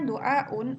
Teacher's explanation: Terlihat dengan jelas wawu diganti dengan hamzah litasilin nutki untuk memudahkan dalam mengucap. Yang kedua, yakni ada wawu dan ya. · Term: ibdal